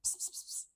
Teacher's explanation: So we put our lips together and explode out the air with no vibration at our throat. So that's the the p sound.